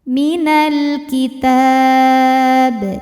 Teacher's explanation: Karena alif lam menghadapi huruf qamariyah yaitu kaf, maka lam dibaca dengan jelas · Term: izhar qamari